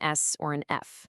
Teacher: Fricatives create well friction. You can hear and feel that continuous hissing sound with an S or an F.